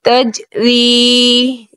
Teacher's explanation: یا مدہ ہے ایک الف کھینچیں گے